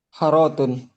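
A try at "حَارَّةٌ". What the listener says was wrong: hanya panjang.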